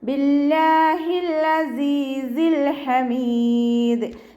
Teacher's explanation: സായ്ക്ക് ശേഷം യാമദ് വന്നിട്ടുണ്ട്, 2 കൗണ്ട് നീട്ടിക്കൊടുക്കുക. ലാമ് കൽക്കലയുടെ ലെറ്റർ അല്ലാത്തത് കൊണ്ട് ഹാഫ് സുക്കൂന് കൊടുക്കാൻ ശ്രദ്ധിക്കുക.